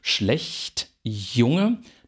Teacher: der Zungenrücken geht an den harten Gaumen und artikuliert diese Laute das sind sogenannte palatale und sie sehen schon wir haben nicht